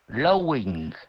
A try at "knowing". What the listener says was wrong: No, it's like N. Knowing.